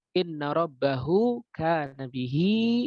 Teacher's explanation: Ba-nya dalam keadaan fathah. Kemudian setelah ha di sini dalam keadaan domah, setelahnya ada kaf. Dan ini menyebabkan dia dibaca 2 harokat. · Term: madsilah sugro